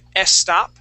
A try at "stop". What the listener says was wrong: Let's take out that E at the beginning of stop and only pronounce that S.